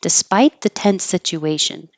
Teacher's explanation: you won't hear the T in despite. And in fact, your tongue won't be in the perfect T position behind your top teeth. · They're not going to take any break and it'll sound like one S.